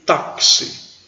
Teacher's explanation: ele não é pronunciado aí com chá che chi cho chu não ele tem som de ks